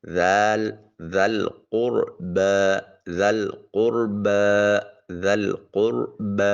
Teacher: با کے اوپر الف المدیہ الصغیرہ ہے، ایک الف کے قیم مقام اس کو لمبا کیا جائے گا